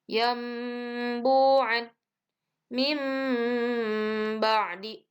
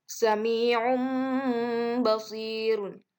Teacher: Iqlab itu artinya merubah atau menggantikan. Maksudnya bunyi nun mati atau tanwinnya itu dirubah menjadi huruf mim. Intinya merubah bunyi n menjadi m.